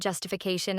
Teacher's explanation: longer word justification the primary stress is on CA syllable four the syllable just which had the primary stress in the root word now takes the secondary stress in the longer form